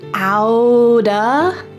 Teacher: G-E-T, and then the next word starts with an O. So that T is surrounded by vowels, and that means that it's gonna change to a D sound.